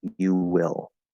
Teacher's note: we get a connection between you and will. They flow into each other.